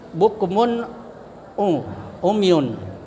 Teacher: Jadi ainnya itu berada di kerongkongan. · Cara membacanya tanwin harus terang, jelas, ya, dan pendek, tidak samar, harus jelas dan tidak mendengung. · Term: idhar halqi